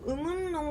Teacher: 이런 것도 리을의 비음화라고 볼 수가 있겠죠. 여기서는 의문에서 니은이 비음이기 때문에 리을이 거기에 끌려간 거고요.